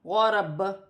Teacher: با بھی حروف قلقلہ سے ہے. وقف کی صورت میں با پر تھوڑا سا قلقلہ پیدا ہوگا